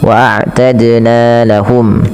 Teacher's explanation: dannya dipantulkan karena ya qalqalah